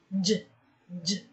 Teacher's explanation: Again, j, j. We can feel the vibration while having the sound, so that means this is under voiced consonant.